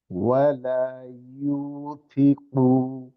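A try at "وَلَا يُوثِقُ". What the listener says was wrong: ইউতে একটা টান হবে। ওয়ালা ইউথিকু।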